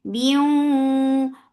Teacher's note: For kasra give E sound attached with wow. This is idgham with gunna, so keep the sound in your nose for a longer time.